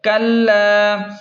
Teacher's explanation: لام کو کھینچیں ایک الف کے برابر کیونکہ الف مدہ ہے اور کاف کو لام کے ساتھ سختی سے ملائیں کیونکہ لام پر تشدید ہے